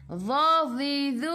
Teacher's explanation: Dha, dhi, dhu, hujung lidah keluar sikit sahaja pada gigi depan. Keluar sikit sahaja, jangan banyak. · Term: huruf dha